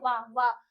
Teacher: जो हमारे दांत होते हैं वो हमारे लिप्स को हमारे ओठ को छूते हैं। व ऐसे कुछ हम ऐसे ही व को साउंड उच्चारण करते हैं। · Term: दंतोष् व्यंजन, दंतोष्ठ व्यंजन